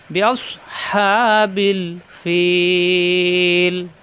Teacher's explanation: বিআস সৎ সফির হরফ, বিআস সিনের মতো যেন না হয়। বিআস হা কণ্ঠনালীতে চাপ দিয়ে একালিপ টান